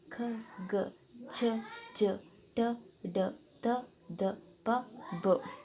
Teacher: ಭಾಗ ಮಾಡ್ತಾರೆ ಒಂದು ಅಲ್ಪಪ್ರಾಣ ಎರಡು ಮಹಾಪ್ರಾಣ ಮೂರು ಅನುನಾಸಿಕ ಅಲ್ಪಪ್ರಾಣ ಅಂತ ಅಂದ್ರೆ ಕಡಿಮೆ ಉಸಿರಿಂದ ಉಚ್ಚರಿಸೋದಕ್ಕೆ ನಾವು ಅಲ್ಪಪ್ರಾಣ ಅಂತ ಕರೀತೀವಿ